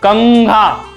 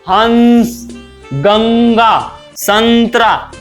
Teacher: अनुस्वार का उच्चारण करते समय ज्यादा हवा नाक से निकलती है, नाक पे ज्यादा प्रेशर पड़ता है